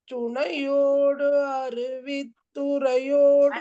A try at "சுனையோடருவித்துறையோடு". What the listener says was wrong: சேர்த்துடுங்க. சுனையோடருவி